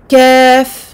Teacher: le fond de la langue ira toucher la limite entre le palais mou et le palais dur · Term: lettre kaf